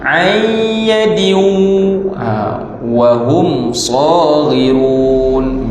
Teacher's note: Mim mati bertemu dengan sad, tu tidak ada dengung